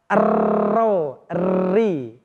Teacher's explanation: ketika kita melafadzkan huruf ra, lidah kita bergetar. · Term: takrir